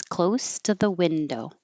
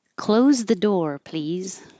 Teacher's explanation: If it's an adjective, the S sounds like an S. Close the door, please. If it's a verb, the S sounds like a Z.